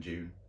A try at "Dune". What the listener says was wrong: You sound like you're saying June, not Dune.